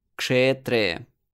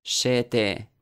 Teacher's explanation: Even if it is a conjunct consonant, like in the word kshetre, we can compare it to another word, shete. You don't really notice any difference in time that it took to pronounce kshe from the first word or she from the second.